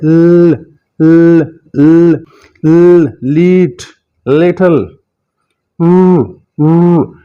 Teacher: जुबान का जो अगले वाला हिस्सा है दांतों की, ऊपर वाले दांतों की जड़ों और सख्त हिस्से यानी रिज की तरफ जाएगा, को टच करेगा। इसे बड़े सारे लोग ला पढ़ा देते हैं, ये ला नहीं है, यह है लीट, लिटल।